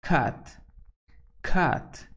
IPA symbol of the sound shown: k